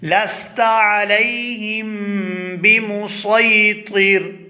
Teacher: یہاں پر ہم سین کو ادا نہیں کریں گے بلکہ یہاں پر صاد پڑھیں گے